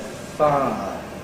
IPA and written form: ˈfaə (fire)